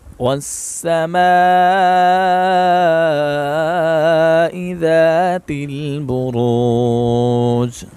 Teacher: را کو موٹا پڑھیں گے اور جیم پر قلقلہ کریں گے